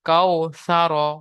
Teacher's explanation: ওয়াও সাকিনের ডানদিকে যাবার এসেছে। ওয়াওলিন হবে। ওয়াওলিন কে নরম আওয়াজে তাড়াতাড়ি পড়তে হবে। টান দেওয়া নিষেধ।